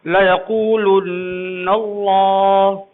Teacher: لُنّا پہ آپ دیر کیوں لگا رہے ہیں؟ اس لیے کہ نون پر تشدید لگی ہے، نون مشدد ہے، تو نون مشدد ہو یا میم مشدد ہو، یہ مشدد یعنی تشدید والا حرف، تو اس کو آپ موٹا کر کے پڑھیے۔